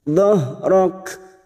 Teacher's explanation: Huruf kaf lagi yang dibaca waqaf, maka sifat dari huruf kaf ini harus terasa, yaitu sifat hamas. Dhahrak.